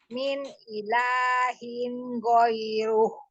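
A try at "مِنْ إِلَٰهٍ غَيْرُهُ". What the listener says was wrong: ilahin itu hu-nya panjang Umi. Min ilahin ghairuhu.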